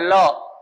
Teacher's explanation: इसमें वायु जब निकली तो वो जो है उसके पारश्व पृष्ठों को स्पर्श करते हुए निकली। इसलिए इसका नाम दिया गया है पार्श्विक।